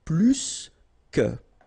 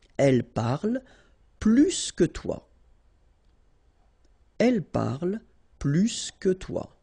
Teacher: if you want to compare with a verb, then in that case, remember, plus will be with the S. So pronounce it plus que.